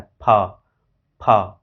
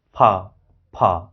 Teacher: नीचे वाला ओट्स और ऊपर वाला दांत, ये दोनों आपस में टच होते हैं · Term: लेबियोडेंटल